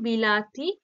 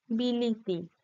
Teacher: অর্থাৎ দেখো এই টা পরিবর্তন হয়ে এই দুই পাশের দুই হস্যই স্বরধ্বনির প্রভাবে প্রভাবিত হয়ে নিজেও একই রকম স্বরধ্বনিতে পরিণত হয়েছে, অর্থাৎ নিজেও হস্যই স্বরধ্বনি হয়ে গেছে।